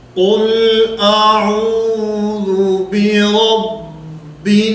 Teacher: ذال کی ادائیگی میں زبان دانتوں کے ساتھ ٹکرائے، زبان دانتوں کے ساتھ لگے · قل کا جو لام ہے اس پر قلقلہ نہ ہو